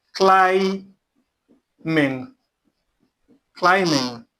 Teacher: Cli is emphasized, is stressed. The ming is the second syllable.